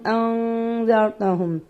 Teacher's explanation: نون ساکن کو ایک الف کے برابر خشوم سے ادا کریں گے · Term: اخفائے حقیقی